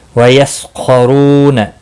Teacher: خا مستعلیہ ہے، پر پڑھا جائے گا، را بھی پر پڑھا جائے گا، پیش کی وجہ سے رو واو مدہ ہے، ایک الف کے برابر کھینچ کر پڑھیں گے۔